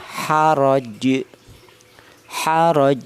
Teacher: Maka huruf jim yang berharakat tanwin kasrah maka dia harus disukun gara-gara dia wakaf. Maka yang terjadi di sini terdapat pantulan, yaitu terdapat bacaan qalqalah kubro.